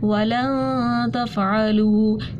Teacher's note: نون ساکن کے بعد تا آ رہی تھی تو اخفا کر دیا